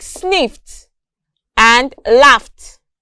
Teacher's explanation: In these words, the ED is represented with the consonant sound T.